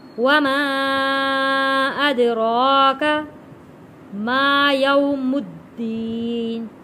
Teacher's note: وما ادراک، دال حروف کلکلہ ہے، را کے اوپر کھڑی زبر ہے، موٹا پڑھیں گے اور ایک الف کے برابر کھینچ کر پڑھیں گے